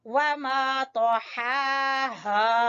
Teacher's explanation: हा को वस्ते हलक से अदा करेंगे और खींचेंगे खड़ी जबर की वजह से, और हा अक्सा हलक से अदा करेंगे और खींचेंगे अलिफ मद्दा की वजह से।